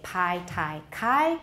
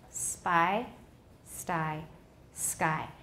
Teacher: if we put an s in front of ptk ptk are no longer aspirated but they are not voiced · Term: unaspirated, The aspiration is gone